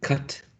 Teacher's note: Cut es pronunciado con un sonido que es corto y es central, es representado por el símbolo que está aquí al medio, al centro, cat.